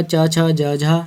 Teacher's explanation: च, छ, ज, झ ये सभी हमारे तालव्य व्यंजन हैं